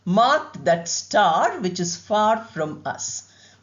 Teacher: Here we have an easy sound, a long ah.